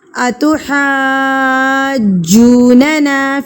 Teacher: آپ نے اس کو جیم پہ رکھ کے 1 سیکنڈ کے لیے زور دینا ہے. اسٹرانگلی وائس ہونی چاہیے.